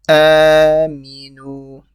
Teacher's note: The a is stretched because it's a standing fatha.